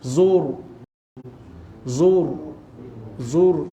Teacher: Kemudian zur, ra mati, sebelum huruf ra mati itu ada huruf lain yang berbaris depan, maka ra itu dibaca tebal